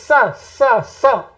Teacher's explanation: इसके उच्चारण का स्थान है दंत। जिह्वा में, जिह्वा दांतों से टच होनी चाहिए